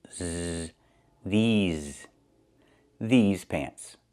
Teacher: I use a long E like green beans, plus the Z sound, like in zebra, with a voice, vibration.